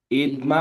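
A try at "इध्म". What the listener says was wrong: धुआं में महाप्राण नहीं आ रहा है आपको, धुआं में महाप्राण आनी चाहिए। नहीं, इद्म।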